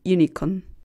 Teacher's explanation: The so-called long U sound is a composite sound of Y and U.